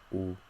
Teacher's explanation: ooh very high in our mouth our mouth is very closed your lips are rounded